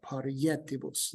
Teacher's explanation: This I is going to be pronounced consonantally so that you can still get the syntactilic hexameter.